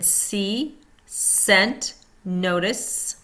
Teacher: S, unvoiced. Tongue tip very close to alveolar ridge but not stopping air. Friction sound made. Heard in see, scent, notice.